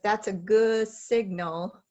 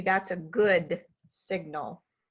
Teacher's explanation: you don't have to fully release the d but you do have to position for it